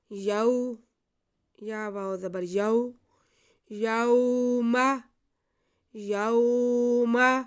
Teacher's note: یوم واو ساکن سے پہلے زبر ہے، واو لین ہے، اس کو کھینچنا نہیں ہے۔